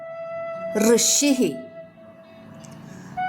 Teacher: നാവിന്റെ അറ്റം മുകളിലെ അണ്ണാക്കിന്റെ മധ്യഭാഗത്ത് തൊട്ടു തൊട്ടില്ല എന്ന മട്ടിൽ നിർത്തി ഋ എന്ന് പറയുക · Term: മൂർധന്യം